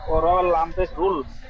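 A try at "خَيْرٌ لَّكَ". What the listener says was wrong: র লাম পেশ না দু পেশ, র লাম দু পেশ রুল।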